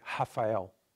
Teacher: the L at the end becomes U, never in Portugal